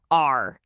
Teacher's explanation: The tongue curls back, but the tip never, ever taps the roof of your mouth. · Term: English R